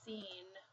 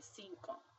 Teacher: The first C sounds like an S because it's next to an I, and the second C sounds like a K because it's next to an O.